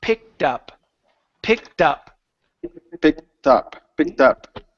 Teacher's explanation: connect the T sound connect the T to the word up